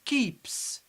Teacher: We pronounce S as S because it's preceded by P.